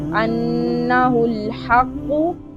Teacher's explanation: हा को बारीक अदा करेंगे, क़ाफ को मोटा पढ़ेंगे।